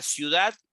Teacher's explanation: la palabra ciudad tiene como sílaba tónica Dad